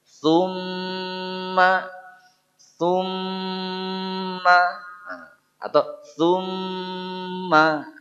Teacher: Tahan dulu di situ ya pada mim tasydidnya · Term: gunah mim tasdid